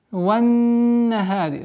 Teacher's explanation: С огласовки фатха уходим на нун. Солнечный звук.